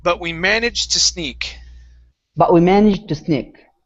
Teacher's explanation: Okay, so we're going to combine these two sounds. Okay, we do not want to finish the D sound.